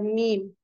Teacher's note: मीम हम कहते हैं तो हमारा जो लिप्स है पूरा बंद हो जाता है, ये होठों की खुश्की से अदा होता है।